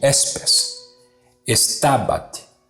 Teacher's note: S é sempre sibilante e nunca soará como Z